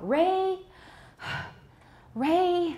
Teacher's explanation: that extra push of air from the lungs that occurs on the first vowel